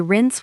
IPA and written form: rɪns (rinse)